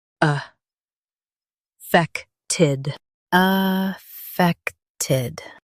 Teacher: Stress fect and keep ted quick.